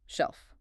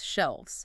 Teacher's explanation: You can literally hear the hard breathy F soften into a vibrating V.